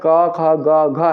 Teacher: क वर्ग में आने वाले जो वर्ण क ख ग घ है उन सभी का उच्चारण हमारे मुख के कंठ वाले स्थान से किया जाता है